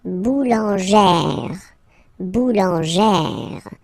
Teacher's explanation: you pronounce it like E, really open E sound